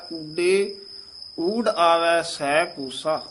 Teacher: ਇਹ ਯਮਕ ਲਾਉਣੀ ਹੈ ਊਡੇ ਇਥੇ ਯਮਕ ਲਾ ਦੇਣੀ ਹੈ ਕਸ ਕੇ ਬੋਲਣਾ ਹੈ